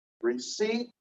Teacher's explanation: We don't pronounce the P.